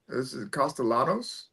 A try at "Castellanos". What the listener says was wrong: I think the L is silent.